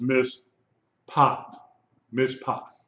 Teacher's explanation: You have a komatz, that pay, that dagesh makes that pay pronounced P. It's, if it didn't have the dagesh, it would be pronounced fe, mishfa.